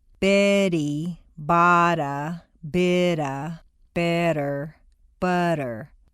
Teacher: all the T's are in weak position, so they all sound like soft D's